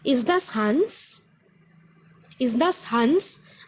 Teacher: Ist das Hans? The intonation goes up.